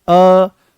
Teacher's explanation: ये अर्ध विवृत्त हैं। अर्ध विवृत्त का मतलब यह है कि मुख यहां पर आधा खुलेगा।